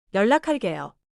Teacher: The 기역 in 락 meets 히읗 and sounds like 키읍: 연락할게요 sounds like 열라칼게요. · For pronunciation, 연락할게요 is one smooth phrase. The 기억 in 락 meets 히읗 and sounds like 키읔.